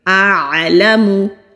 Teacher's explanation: اعلم، پہلے حمزہ الف خالی ہوتا ہے، اگر الف کے اوپر یا نیچے کوئی حرکت ہو تو اس کو حمزہ کہتے ہیں۔ پہلے حمزہ کی آواز پھر عین کی۔